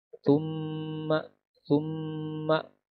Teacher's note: Ada mim dan bertasydid. Ini harus ditahan bacaannya. Thumma, 2 harakat, 2 ketukan. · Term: gunnah musyaddadah